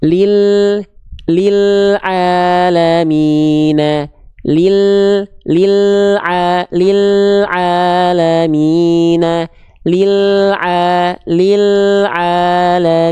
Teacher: nempel ke langit-langit bagian depan Nah ketika dia punya sifat inhiraf ketika dia dilafalkan makhraj lamnya agak diseret disimpangkan ke kanan atau dimiringkan ke kiri · makhraj huruf lam itu nempel ke langit-langit bagian depan